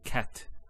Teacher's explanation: actually a stop on the letter t so we say cat so the t doesn't have any vowel associated with it it's actually just a stop on the t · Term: sukun